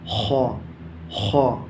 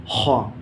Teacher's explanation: ایسے ہی ہا کا مخرج ہے حلق کا درمیانی حصہ، جیسے میں نکال رہا ہوں ہا۔ ایسے ہی خا کا مخرج ہے حلق کا اوپر والا حصہ، خا۔ یاد رکھیں عربی کا خا ہوتا ہے اور اردو میں کھا ہوتا ہے، وہ الگ ہوتا ہے۔